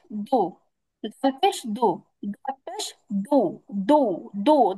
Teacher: জিহ্বাটা উপরের দিকে উঠে যাবে হ্যা মুখটাকে গোল করতে হবে